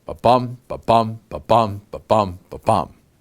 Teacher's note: we're talking about 5 different sets of unstressed, stressed syllables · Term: iambic pentameter